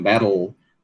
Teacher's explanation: O importante é você dizer o T e depois não tirar o ponto de realização do T e dizer o L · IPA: /bætl̩/